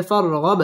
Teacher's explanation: রব্বি বা তাসদীদ ওয়ালা হরফ রব্বিকা ফার র পুর হবে ফারগব বা কলকলার হরফ ধাক্কা দিয়ে পড়তে হবে